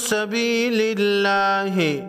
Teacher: لفظ اللہ سے پہلے حرف پر زیر ہے، لفظ اللہ کے لام کو باریک پڑھیں گے